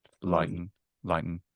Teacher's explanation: I'm still a little velarized, I think, but I'll take it.